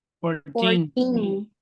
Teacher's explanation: so from 13 to 19, the accent is on teen.